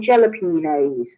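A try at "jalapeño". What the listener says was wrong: Yeah, but I don't think you're pronouncing right because it's jalapeno because the J in Mexico in Spanish is pronounced H. So that's why it's called jalapeno.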